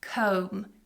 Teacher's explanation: So it has a silent B. Don't try and pronounce the B when you have that combination of M and B together.